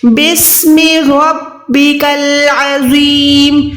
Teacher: رو پہ زبر ہے تو رو موٹی ادا ہوگی